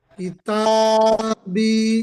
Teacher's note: ইয়া সাকিনের ডান দিকে জের এসেছে, একে ইয়া মাদ্দা বলে, এক এক এক আলিফ পরিমাণ টান দিয়ে পড়তে হয়।